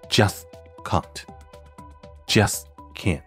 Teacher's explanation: just▁的结尾▁t▁后紧跟▁can't▁开头的▁k，▁所以会发生无声除阻，或者说不完全爆破、失去爆破的语音现象